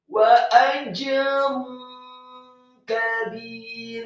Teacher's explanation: Setelah membaca jim yang tafkhim, sukun dan diqalqalahkan atau dipantulkan, ada huruf ra yang marfu atau dhammah tanwin dengan posisi mulut tertutup. Namun setelahnya ditarik karena huruf ra yang marfu atau dhammah tanwin bertemu dengan huruf kaf yang tipis.